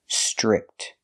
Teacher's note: The TR makes a ch chicken sound.